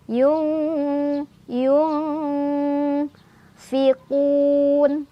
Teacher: Cara bacanya nun sukunnya dibaca samar-samar sambil berdengung. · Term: ikhfa ausat